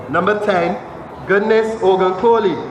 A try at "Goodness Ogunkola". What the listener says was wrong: Kola. How you not see a whole A there?